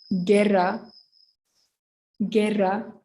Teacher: double r is a bit long